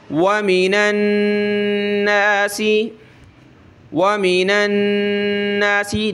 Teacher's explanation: वमीनन नासी, वमीनन नासी, नून colourful है, यानी नून के ऊपर ये तशदीद आ जाती है तो वहाँ गुन्ना करना होता है, नाक में आवाज़ पैदा करनी होती है